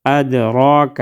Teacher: دال ساکن ہے تو ادھر ہم قلقلہ کریں گے